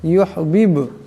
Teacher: ইউহিব, এখানে বা সাকিন, বা কলকলার হরফ, আওয়াজটিতে এটি টক্কর খাবে।